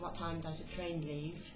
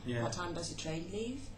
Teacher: Yes, a further distinction would be between WH questions asked for the first time with a falling intonation, what time does a train leave, and the same kind of questions asked with the rising intonation, to refer back to information that has been previously mentioned.